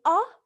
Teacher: you don't obstruct or constrict the airflow it just flows and there is a continuous constant vibration of the vocal cords